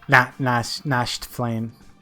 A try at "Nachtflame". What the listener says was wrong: Silent T. It's knocked.